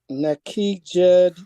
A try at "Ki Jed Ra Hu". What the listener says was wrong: So why you saying Neki? I ain't trying to be on your head. Say that again.